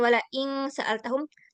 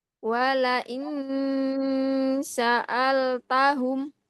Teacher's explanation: dia bukan ng ya, bukan wala ing sa'altahum, tapi wala in sa'altahum